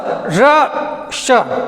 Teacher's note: बोलिए ये ध्वनि कहाँ से आ रही है, अपने मूर्धन्य से टकरा के आ रही है, तो इसका उच्चारण स्थान मूर्धन्य हो गया।